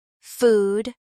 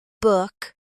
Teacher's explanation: In words like food and move, the sound is long and rounded. In words like book and good, it's shorter and more relaxed. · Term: ooh sound